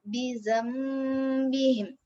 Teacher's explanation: Lepas tu cara bacaannya ialah kita kena ubah dia. Tukarkan bunyi nun mati tadi kepada bunyi mim mati. Ni ada mim kecil kat sini. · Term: iqlab